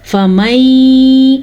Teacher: नून साकिन के बाद यमून में से या आया हुआ है तो हम इन दोनों को आपस में मिला के पढ़ेंगे। इसे कहते हैं इदगाम बिल गुन्ना।